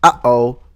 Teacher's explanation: in the cartoons, when you hear, uh-oh, that's a glottal stop.